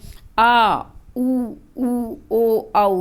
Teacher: पश्च स्वर वो होते हैं जिसमें जीभ का पीछे का भाग क्रियाशील। जैसे आ का उच्चारण किया आपने, पीछे कैसे आवाज आ रही है?